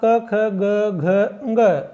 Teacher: क वर्ग अर्थात क ख ग घ ङ का उच्चारण स्थान कंठ है।